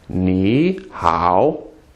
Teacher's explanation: when you have two words in a row and they're both third tone as in here KN third tone how third tone you make the first one a second tone you change it to second so actually it becomes ni how